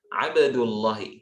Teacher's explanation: tebalkanlah huruf lam dari asma Allah, dari isim Allah, dari nama Allah. Ketika apa? An fathin au dhammin, ketika sebelumnya berharokat fathah atau dhammah. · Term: tafkhim pada huruf lam